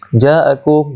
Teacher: Ja'akum mad wajib muttasil 4 ataupun 5 harakat.